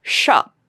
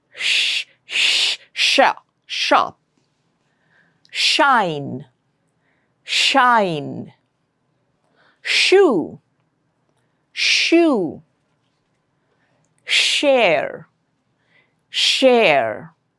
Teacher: Air flow is coming out of a narrow opening in the mouth. Uh it's slightly prolonged and you get to hear the hissing sound sha and ja. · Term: sha sound